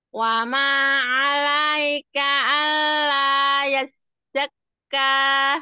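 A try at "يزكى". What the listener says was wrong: Yes, pakai zai, Bu. Yazzak. Tidak boleh, yes, itu sin. Yes, pakai z. Z, z, z, z, yes, yes. Ujung lidah sejajar gigi bawah, tetapi ada getaran di lidah.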